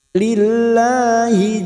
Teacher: lam Qamar Nal izzata huruf Zain lagi masuk izzata lillahi lillah lam jalalah yang sebelumnya kasrah kita baca tarkik